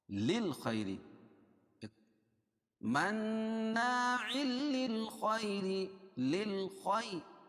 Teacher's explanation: را باریک ہوگی کیونکہ را کے نیچے زیر ہے اور خا کو موٹا پڑھیں گے